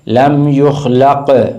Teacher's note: یہ قاف کو گلے سے پڑھنا ہے، یہ کاف یخلق نہیں پڑھنا، گلے سے پڑھنا ہے، زبان کی جڑ و تعلق کا نرم سا۔